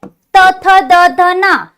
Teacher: जिभेचा शेंडा दाताच्या मागे लावतो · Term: दंत्या